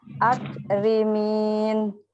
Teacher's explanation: baca huruf kaf itu jangan sampai ke ya, ada ke-nya. Nggak boleh mantul.